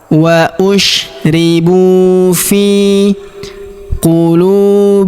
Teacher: Huruf lu kita panjangkan dua harakat karena wau sukun di depannya.